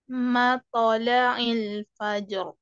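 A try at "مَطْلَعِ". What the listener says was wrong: Masih ke mato ya. Anda dengarnya ya, matola'il. Jadi matola'il ya. Ato, ito, uto, matola'il ya.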